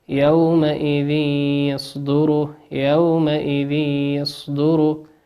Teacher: تنوين أتى بعده حرف الياء والياء من حروف الإدغام بغنة يغن بمقدار حركتين